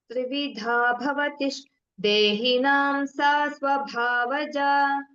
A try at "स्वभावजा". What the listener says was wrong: Swabhavaja. I think you said it as Swabha, something like that. You interchanged.